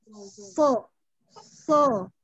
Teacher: so itu dia harus nempel ke langit-langit. Kan segi makhraj dia ada di ujung lidah nih, di dinding. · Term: itbaq